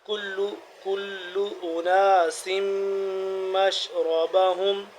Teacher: میم مشدد آ گیا تو یہاں پہ ہم غنہ کریں گے